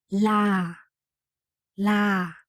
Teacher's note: In Burmese, we don't say r sound, so we have to say la